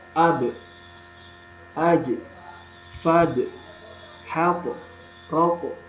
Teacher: pengucapannya dia dipantulkan dengan lembut, tanpa berlebihan, dan juga tanpa seolah-olah mengucapkan huruf hamzah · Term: huruf qalqalah